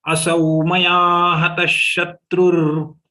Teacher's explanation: The two visarga has to be pronounced differently. The visarga of ta will be pronounced like sha. Visarga of tra will be pronounced like ra.